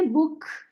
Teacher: अंग्रेज भी जो है के को ऐसे हल्का सा ख बोलते हैं